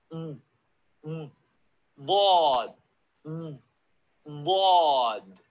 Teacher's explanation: Side of the tongue. Tongue is going to be flat. I'm going to press it to one side here.